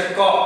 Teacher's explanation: ક બોલીએ તો પાછળ કેનો ઉચ્ચારણ થાય છે? અનો ઉચ્ચારણ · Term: હસ્વ સ્વર